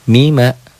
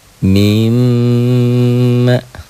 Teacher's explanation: Double, ditahan dan dengung. Double, ditahan ada panjangnya, ada madnya, dengung ke hidung, itulah gunnah.